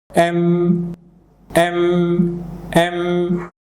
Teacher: আপনার দুটো ঠোট একসাথে করলে যে সাউন্ডটা বের হবে